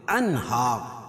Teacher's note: ناک میں آواز کو چھپائیں گے نہیں، اس کو ظاہر کر پڑھیں گے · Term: اظہار حلقی